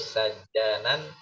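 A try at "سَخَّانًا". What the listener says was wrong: Nah, ini huruf kha. Sakhanan.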